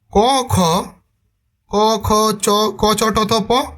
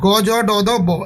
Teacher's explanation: ক খ চ, ক চ ট থ প, খ জ ঠ থ ফ, এরা সবাই অঘোষ। আর গ জ ড দ ব এগুলো হচ্ছে ঘোষ ধ্বনি। তাহলে কি হচ্ছে, অঘোষ ধ্বনি ঘোষ ধ্বনিতে পরিবর্তন হয়ে যাচ্ছে।